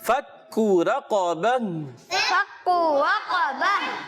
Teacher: کاف کو ادا کرنا ہے باریک پتلا اور دوسرے کاف کو ہم موٹا رکھیں گے